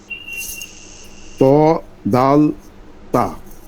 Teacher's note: 11 নম্বর মাখরাজ, জিভের আগা সামনের উপরের দুই দাঁতের গোড়ার সঙ্গে লাগিয়ে।